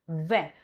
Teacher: I am using lip and my teeth, that is labiodental. It is voiced V. You are here feeling voice vibration.